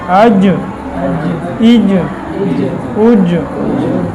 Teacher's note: مخرج نمبر 7 وسط زبان اور اس کے مقابل اوپر کا تالو، یہ تو مخرج ہوا